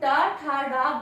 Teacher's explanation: जब हम टा, ठा, डा बोलते हैं तो मूर्धा से ध्वनि स्पर्श होते हुए बाहर आती है